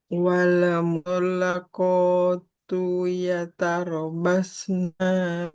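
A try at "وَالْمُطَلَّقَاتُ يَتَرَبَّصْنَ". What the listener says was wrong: Yatarab Ba-nya kurang tekan. Ada tasdidnya ya. Yatarabbasna.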